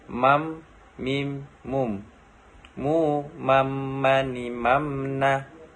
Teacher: Melafalkan huruf mim dengan cara merapatkan bibirnya.